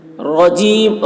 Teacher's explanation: رجیم را مشدد ہے، را کی آواز بھی موٹی ہوگی